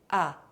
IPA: a